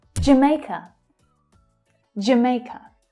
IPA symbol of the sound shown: dʒ